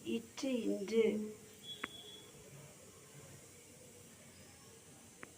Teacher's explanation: இரு மெய்களும் நாவின் இடைப்பகுதி நடு அன்னத்தின் இடைப்பகுதியை பொருத்துவதால் பிறக்கும் எழுத்துக்கள்